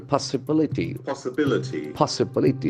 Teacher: accent falls on the third syllable